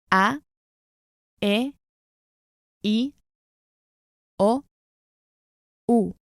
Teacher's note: pronounce only pure vowels, just as you hear them, avoiding any diphthongs, that's to say sounds like A instead of E and O instead of O.